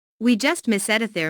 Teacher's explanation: Notice the emphasis on just to show the very recent past.